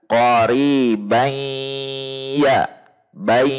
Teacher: Jadi ketika idghamnya saja ada dengung ke hidung. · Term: idgham naqis